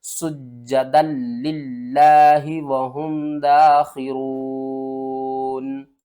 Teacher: اور سین کو جیم کے ساتھ سختی سے ملائیں گے